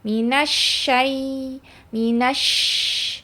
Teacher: Dan suaranya juga harus mengalir. Udara harus mengalir karena dia memiliki sifat hamas dan rokhwa. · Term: huruf shin